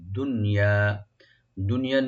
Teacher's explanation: নুন এখানে এজাহার মাতলাক আমরা বলি, এখানে কোনো গুণ হবে না, কলকলা হবে না